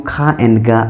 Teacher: They are made by the back of the tongue making contact with velar of the back of the mouth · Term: velar plosives